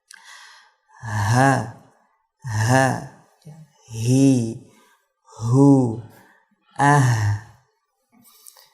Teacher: Untuk makhraj dari huruf ha ini yaitu dia huruf yang keluar dari al-halq atau tenggorokan, tepatnya di tenggorokan paling bawah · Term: ha besar